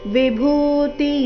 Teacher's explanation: ವಿಭೂತಿ ಭೂ ಮಹಾಪ್ರಾಣ ದೀರ್ಘ ಬರಬೇಕು